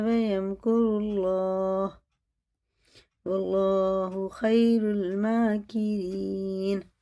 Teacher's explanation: اللہ کا لام پر واو زبر سے ہے تو پر ہوگا، یعنی منہ بھر کے موٹا کر کے پڑھنا